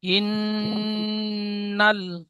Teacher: এই নুন মুসাদ্দাদ ওয়াজিব গুন্না, একালিফ পরিমাণ গুন্না করে পড়তে হবে।